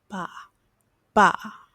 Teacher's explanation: It's not a B, but it's also not a P. It's somewhere in between. So, it's sort of like a ball or pen, but it's soft.